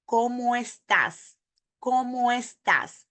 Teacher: We put the ¿cómo and the estás together, and we create the sound of the breath group